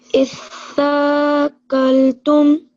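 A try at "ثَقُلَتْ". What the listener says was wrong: Well done.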